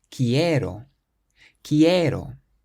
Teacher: There are 3 syllables and we stress the one before last, which is the e.